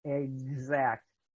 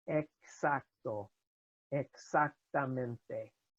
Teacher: X is pronounced unlike English without voicing